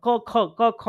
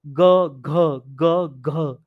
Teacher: पूरा अंदर तक का सिस्टम जो है वाइब्रेट हो जाता है ग और घ बोलने में क्यों क्योंकि संवार नाद है संवार है वोकल कोड जो